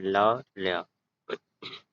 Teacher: पार्श्विक व्यंजन जैसे जिसके उच्चारण में जीभ बीच में स्पर्श करे और हवा एक या दोनों पार्श्वों से निकले।